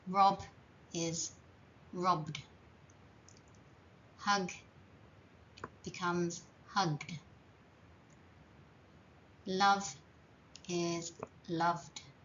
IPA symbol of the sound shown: d